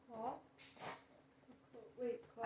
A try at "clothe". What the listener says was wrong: That's cloth. But if I add the E, the vowel changes its name because of the E.